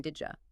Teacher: completely merge 2 adjacent sounds into a single j or she sound